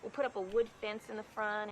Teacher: she's going for just a touch of a Texan accent so you can hear a pin pen merger pronouncing pen and pin about the same in the word fence